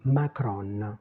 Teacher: on prononce le N finale parce que c'est notre habitude de presque tout prononcer